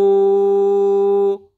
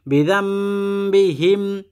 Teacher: নুন সাকিনের পরে বা এজন্য এই নুনটা মিম হয়ে গেছে অর্থাৎ ইকলাবের হরফ জাম উচ্চারণ হবে জান হবে না বিজাম্বিহিম পাসকল্লি